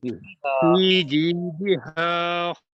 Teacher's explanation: دال کے نیچے زیر ہے، اس کو معروف کر کے پڑھیں